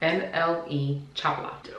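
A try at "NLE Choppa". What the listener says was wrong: Where are you getting the L from? You said Chapla. It's Chapa.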